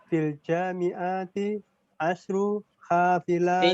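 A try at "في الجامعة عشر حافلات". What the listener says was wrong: T-nya nggak panjang. Fil jami'ati. Bacanya gitu. Fil jami'ati gitu. Enggak ada fil jami'ati, enggak gitu. A-nya enggak panjang. Fil jami'ati. A-nya nggak panjang. Ainnya nggak panjang. Fil jami'ati. Perhatikan panjang pendeknya.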